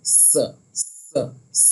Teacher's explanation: मद है इसलिए हम इसको खींच के पढ़ रहे हैं और इसकी आवाज जो होती है वो होती है स स स। एकदम सीटी की तरह आवाज जो है वो निकलनी चाहिए और इसका जो मखरज है वो जा के मखरज के बराबर ही है। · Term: सीन